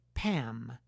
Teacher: If the lips close again, then it will be “pam”